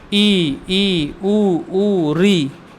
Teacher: इसमें देखिए अगर आप बोलिए तो मुख बहुत थोड़ा सा खुलता है